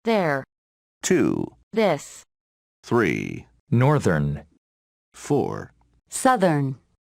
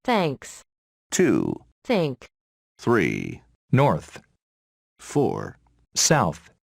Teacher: voiced and voiceless th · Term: voiced th